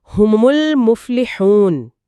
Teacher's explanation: लाम जबान की नोक से और मीम दोनों होठों को मिलाने से अदा होता है। यहां भी मखरज अलग-अलग हैं। · لام زبان کی نوک سے اور میم دونوں ہونٹوں کو ملانے سے ادا ہوتا ہے۔ یہاں بھی مخرج الگ الگ ہیں، اس لیے لام کی آواز کو پوری طرح ظاہر کیا جا رہا ہے۔